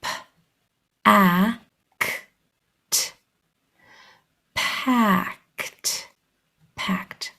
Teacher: all of the graphs are making their voiceless sound except for the vowel the vowel is the only one that's using vocal cords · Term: voiced